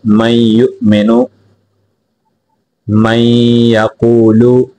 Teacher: نون کو نہیں پڑھیں گے، میم کو یہاں یا کے ساتھ ملائیں گے، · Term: ادغام بالغنہ